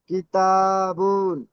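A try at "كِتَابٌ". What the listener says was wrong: বা দুপেশ বুন বলে টান দিচ্ছেন, বুন টান হবে না। বা দুপেশ বুন বলেন। প্রত্যেকটা অক্ষর টান হয়ে যাচ্ছে, টান হবে না জি, যে অক্ষর টান হবে সেখানে টান দিতে হবে। হারাকার টান হয় না। হা যাবার হা, হা বলে টান দিলে তো ভুল হবে।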